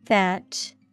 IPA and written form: θætʃ (thatch)